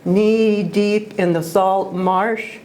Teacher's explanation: one long e sound follows another and then the short a sound is also repeated